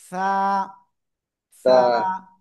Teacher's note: জিব্বার আগা, এই দুই দাঁতের আগায় লাগান, লাগিয়ে হালকা বাতাস বের করতে হবে